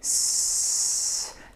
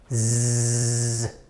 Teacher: And we make our mouth similarly to this one, S. However, we have to narrow the airway a little bit more so that we have to make a vibration out of that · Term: buzzing sound